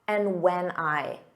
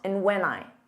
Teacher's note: So that and is almost dropped.